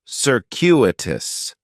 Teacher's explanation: stress is going to be on that second syllable and that CU is kind of like you're saying the letter